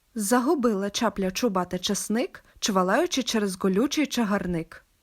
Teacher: в українській мові звук ч завжди твердий при вимові чи кінчик язика потрібно поставити на початок твердого піднебіння